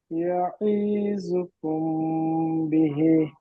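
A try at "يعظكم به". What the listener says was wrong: ইয়াঈদ টান হয়ে গেল, ইয়াঈজুকুম, ইয়াঈজুকুম, এখানে গুম কুমে যে গুন্না হবে, ইয়াঈজুকুম বি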